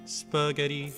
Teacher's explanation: Because spaghetti stresses the second syllable